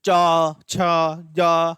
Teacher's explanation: च वर्ग हमारा कहां से बोला जाता है तालव्य से बोला जाता है